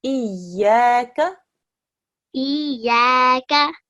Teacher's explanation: there's a ya mushaddad and we join it with the alif beforehand. So it's Iyaka.